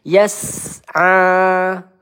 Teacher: Baroyas. Yas, sin sukun. Kita alirkan dulu sinnya.